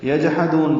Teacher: یجحدون جیم ساکن پہ قلقلہ کریں گے، یجحدون ہا وسط حلق سے ادا کریں گے اور دال کو لمبا کریں گے، نون ساکن پہ اظہار ہے یجحدون.